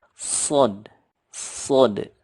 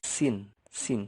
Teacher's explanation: Membedakan dengan sin adalah kalau sod itu lebih menggema di mulutnya. Kalau sin ini kan tipis